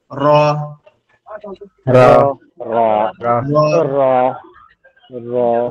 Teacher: যে আমাদের জিহ্বার সাইড নিচে উপরের যে অংশটা আছে এইখানে লাগি একটু কম্পন মতন মানে কেপে কেপে উচ্চারণ হবে